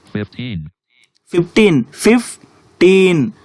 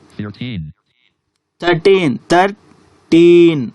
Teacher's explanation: Words that end in teen put stress on the teen.